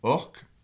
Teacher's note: orque, on a un son sourd devant une consonne sourde.